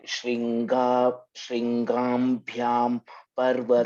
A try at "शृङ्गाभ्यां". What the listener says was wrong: Gam, no, not gam. Shringabhyam.